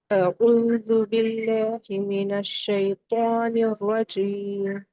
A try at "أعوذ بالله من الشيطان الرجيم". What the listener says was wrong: اور را کو بھی تھوڑا تخفیم دے. را، را، را.